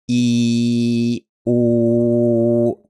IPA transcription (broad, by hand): i u